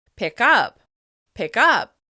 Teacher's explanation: For example, the phrasal verb "pick up" almost sounds like "pi kup" because the /k/ sound connects the two words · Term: catenation